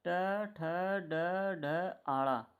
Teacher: मूर्धा से उच्चारित करने वाले यह आपके वर्ण होते हैं